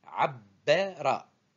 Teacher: Remarquez bien que je double la lettre du milieu par la présence de shed et je prononce abbara. Je prononce 2 fois b.